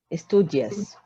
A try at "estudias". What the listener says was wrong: Ujú, muy bien.